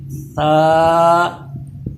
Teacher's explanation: ثا پہ پھر دیکھیے سیٹی پیدا نہ ہو، زبان اوپر کے دانتوں سے چپکے